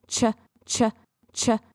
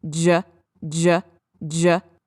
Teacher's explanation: So it's the exact same position, ch, ch, ch, and j, j, j. They do the same thing, but ch is unvoiced and j is voiced.